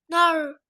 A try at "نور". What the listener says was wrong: نور. دي بقى فيها ضم ضم الان، نطقها او زي ما هي، نور. نور. ما ينفعش اقول نار، ما ينفعش اقول نار، دي بقى اللي هقولها نور. نور. نور. دي بقى اللي نطق فيها الاو عادية.